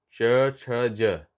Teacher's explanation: जब ज का उच्चारण करते हैं तो हमारा जीभ का अगला भाग तालु से स्पर्श करता है